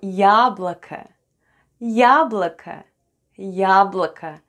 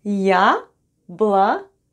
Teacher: both letters О are unstressed and pronounced as А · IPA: /yablaka/